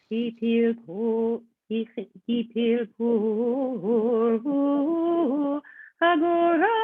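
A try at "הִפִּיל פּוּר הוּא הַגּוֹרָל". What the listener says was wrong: One thing to refine here with the single syllable on Kadma, we're going to skip that pickup note. It will drop down.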